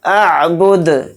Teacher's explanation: اعبد، دال کو ساکن کر کے پڑھیں گے کیونکہ یہاں پر آیت ہو رہی ہے، حالت وقف میں دال یہاں پر ساکن ہوگا اور دال میں قلقلہ بھی ہوگا